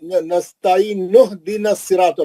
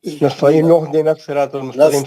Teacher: حمزہ کو گرا دے رہے، الف کے نیچے زیر والا حمزہ کو گرا دے رہے